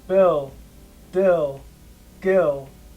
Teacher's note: the voiced counterparts of these sounds, B, D, and G, are always unaspirated